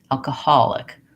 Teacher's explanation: And so I'll see that instead of having long, short, I have short, long, short, alcoholic. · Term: third syllable stress